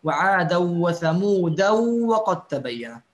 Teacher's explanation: ويقرأ الإمام شعبة وعادا وثمود وقد تبين بالتنوين مع الإدغام